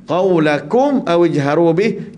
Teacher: kita izharkan, jelaskan mim mati tanpa dengung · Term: izhar syafawi